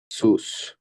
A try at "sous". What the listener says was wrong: না সুস না, এর সাইলেন্ট না। সু, সুখ, সু, হ্যাঁ। সুখ, এটা এর সাইলেন্ট থাকবে।